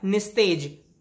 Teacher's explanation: विसर्ग और त मिले तो स शुद्ध व्यंजन में विसर्ग का परिवर्तन हो गया